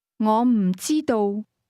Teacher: don't know is pronounced with a combination of falling high and mid-level tone.